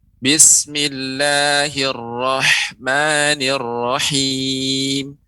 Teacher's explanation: pengucapan hak mirip ke huruf k Nur Rohman atau neurokimia demikian seharusnya huruf H tipis dan mengeluarkan udara yang banyak